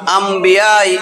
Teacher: তানবিনটা মিম হয়ে যাবে এবং গুণনা কইরা পড়তে হবে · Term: ইকলাব